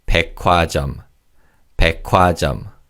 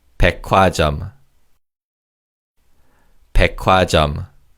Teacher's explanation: the 기역 받침 in the first syllable combines with the 히읗 in the second syllable to make a kiuk sound. So this is pronounced as 백화점.